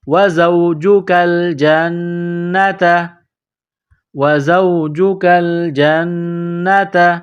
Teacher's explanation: تا زبر تا، گولتا ہے نقطوں والی، اس کو باریک کرنا ہے